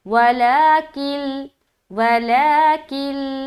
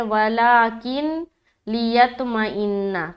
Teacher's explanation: بعض اوقات لوگ یہاں پر غلطی کرتے کہ پڑھتے ہیں ولاکن لیطمئن، تو غلط ہے، نون میں نہیں ملانا بلکہ لام میں ملائیں گے